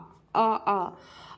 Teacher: जीवा व मुख विवर के आधार पर। विवृत, जीवा का विशिष्ट भाग कम ऊपर उठे और मुख विवर बहुत खुले रहे